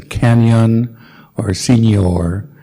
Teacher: So we've got to insert a sort of Y after the N.